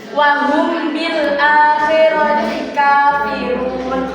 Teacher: Ifa syafawi yaitu apabila ada mim sukun bertemu dengan huruf ba, maka bunyinya pada mim sukun itu diucapkan secara samar disertai dengan mendengung dan kedua bibir terkatup